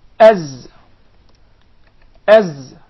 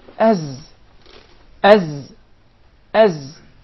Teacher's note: and there is actually a whistling sound